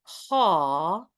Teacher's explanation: you can feel how there's a sense of the tongue going back a little bit on the haw